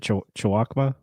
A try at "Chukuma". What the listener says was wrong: W silent.